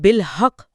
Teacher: یہاں 2 مراحل میں ادائیگی ہوگی۔ پہلے تشدید کی وجہ سے کاف کے مخرج پر مکمل دباؤ ڈال کر اسے بند کیا جائے گا۔ ایک لمحے کے لیے آواز رکے گی۔ پھر دوسرا مرحلہ قلقلہ کا ہے، جس میں مخرج کو ایک جھٹکے کے ساتھ کھولا جائے گا جس سے ایک واضح گونج پیدا ہو، تو یہ بالحق پڑھا جائے گا۔